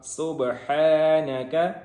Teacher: سین ہے، اس میں سیٹی کی آواز آئے گی، اور آگے با حروف قلقلہ میں سے ہے، اس کے اوپر ساکن ہے، تو یہاں پہ اس کو قلقلہ کریں گے، ہلا کے پڑھیں گے۔